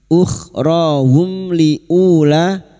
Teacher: Qalat, sekarang di sini kita wasal, kita uraikan pada kalimat ukhrahum liula, mim sukun bertemu lam idhar syafawi, mim sukun dibaca jelas tanpa mendengung.